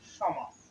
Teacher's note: যুক্ত খ যদি শব্দের প্রথমে থাকে তাহলে শুধু স এর উচ্চারণটাই প্রাধান্য পাবে, অর্থাৎ স এর উচ্চারণটাই গুরু হবে।